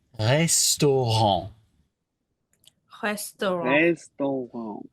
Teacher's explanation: imagine that instead of doing an actual R, we're doing more of a very silent or almost a little bit breathy H